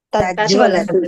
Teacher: double జ రావాలి రెండు హాఫే రావాలి